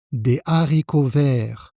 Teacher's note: voici comment il s'écrit, et donc l'erreur ici, c'est de faire la liaison. On doit dire des haricots verts, sans liaison.